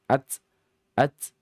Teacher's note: maka dibaca dalam keadaan syiddah kuat dan juga hames ada efek bunyi setengah harakat